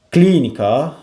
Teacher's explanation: Klinika vurğu əvvələ gəlir.